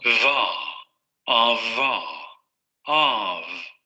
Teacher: Entonces el fonema anterior era fa, ahora tenemos va, di, vi. Labiodental, el labio inferior va a subir hacia la zona de los dientes. Vamos a generar la fricación otra vez, pero va a haber vibración de cuerdas vocales. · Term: Labiodental fricativo sonoro